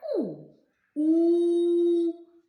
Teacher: губки витягуються вперед в трубочку